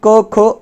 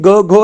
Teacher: क ख अघोष आणि ग घ हे घोष व्यंजन असतात